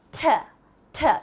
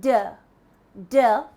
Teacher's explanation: for the voiceless sounds you can feel the puff of air